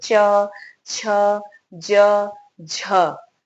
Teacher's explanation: तो तालु से उच्चारण हो रहा है, लेकिन यहाँ संघर्ष होता है, जो हवा निकलती है वो संघर्ष करते हुए च, छ, ज, झ, ये जो हवा निकल रही है इनमें घर्षण है, संघर्ष बना हुआ, इसलिए इसे स्पर्श संघर्षी व्यंजन कहते हैं।